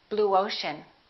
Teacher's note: we don't put a little y in there, we put a little W sound, w. Round your lips, who is.